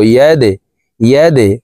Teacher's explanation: দাল কলকলার হরফ, নিচের দিকে ধাবিত করে ধাক্কা দিয়ে উচ্চারণ করব